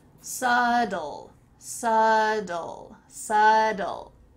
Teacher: in American English, if there is a T with two vowels on either side, because remember we forgot about that B, often that T changes to a D sound · We have a BT in the middle of this word, but it sounds like a D. Well, first of all, the B is silent, so let's forget about that.